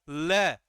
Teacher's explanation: ल का भी उच्चारण किसकी सहायता से किया जाता है, जीभ दांत की सहायता से। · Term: दंत्य वर्ण